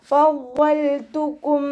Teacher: മഹ്റജ് വരുന്നത് നമ്മുടെ മേലെ മുൻപല്ലിന്റെ അറ്റം താഴെ ചുണ്ടിന്റെ ഉൾവശത്ത് വെച്ചിട്ടാണ്